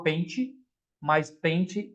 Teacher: a pronúncia é com I, mas a escrita é com E